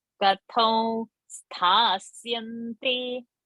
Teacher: Ka is alpa prana, tha is mahaprana.